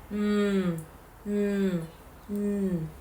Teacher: And then we have the nasal sounds. The velum is lowered allowing air to escape through the nose